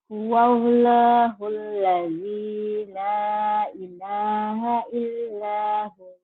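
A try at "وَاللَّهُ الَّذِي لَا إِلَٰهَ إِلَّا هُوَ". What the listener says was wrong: Hu-nya jadi panjang ya, Bu ya. Huwallahul ladzi la ilaha illahu. Jadi matobi jadi panjang. Karena dihentikan.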